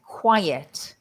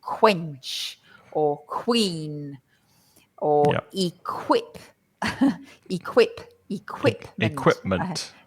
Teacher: really, it's pronounced as if you have a K and a W.